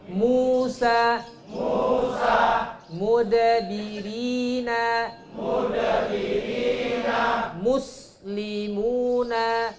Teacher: huruf mim merapatkan dua bibir disertai dengungan dari rongga hidung.